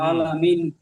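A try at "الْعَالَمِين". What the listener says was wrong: আলামিন, মিমটা টান দেন।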